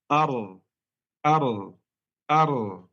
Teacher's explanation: bergetar saat mengucapkan huruf ra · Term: takrir